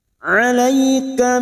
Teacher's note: huruf Ain yang memiliki sifat tawassud dan jahar · fathah bertemu ya sukun huruf lain atau yang biasa disebut dengan huruf lin. Kita lunakkan.